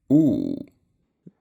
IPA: uː